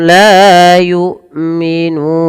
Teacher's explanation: Nah, diistilahkan dengan sukun arid bukan sukun asli. Maka berapa harakat untuk membaca yukminun? Boleh dua, boleh empat, boleh pula enam harakat. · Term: mad arid lisukun